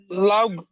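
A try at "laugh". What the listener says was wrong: No, no, no, এটা লাভ না, এটা লাফ। লাফ, লাফ, হাসা, লাফ।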